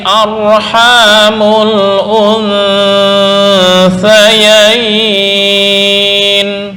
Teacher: Arham ini adalah bacaan tafkhim, di mana ada ra sukun sebelumnya berupa harokat fathah, maka dibaca tafkhim.